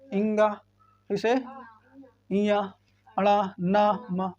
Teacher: ये वाला जो है नाक से बोले आते हैं, बगैर नाक के साधन इसको नहीं बोलते हैं, इसलिए ये जो पूरा वर्ग है ये नासिक है।